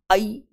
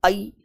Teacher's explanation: जब अपन आई को बोलते हैं तो ऐसा लगता है कि जीवा बीच में जाकर ऊपर चिपक गई है और आगे वाले भाग से बोला जा रहा है देखो ई